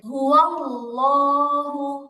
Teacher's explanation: আল্লাহ শব্দের লামটা যখন মোটা করে পড়া হয় তখন জিহ্বার আগাটা দাঁতের আগায় লাগবে